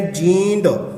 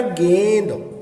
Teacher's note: ਜਦੋਂ ਅਸੀਂ ਬੋਲਦੇ ਹਾਂ ਤਾਂ ਨਾਲ ਦੀ ਨਾਲ ਆਵਾਜ਼ ਹੈ ਜਿਹੜੀ ਮੂੰਹ ਦੇ ਨਾਲ ਨੱਕ ਦੇ ਵਿੱਚ ਆ ਰਹੀ ਹੈ